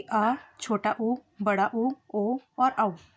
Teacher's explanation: मध्य स्वर जीभ के बीच के हिस्से से बोले जाते हैं। वहीं पश्च स्वर जीभ के पिछले हिस्से से बोले जाते हैं।